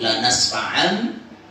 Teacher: Ikhfaul mim fil ba. Menyamarkan bunyi mim pada ba. Itu terjadi pada lafaz tadi, lanas fa'am bin nasiyah.